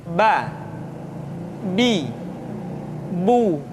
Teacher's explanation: Yang kedua, huruf Ba. Huruf Ba dikeluarkan dengan cara merapatkan kedua bibir kita.